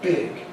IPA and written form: bɪg (big)